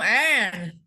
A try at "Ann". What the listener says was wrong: Oh, Anne. So just say Anne. Don't say on. Say Anne, right? Like short A, Anne.